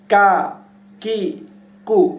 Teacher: আরেকটা যেটা কাফ আছে সেটা উচ্চারিত হবে জিহ্বার মধ্যখান থেকে, মানে মাঝের অংশ থেকে উচ্চারিত হবে।